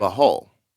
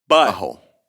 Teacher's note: They make the T sound in the back of their throat. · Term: glottal stop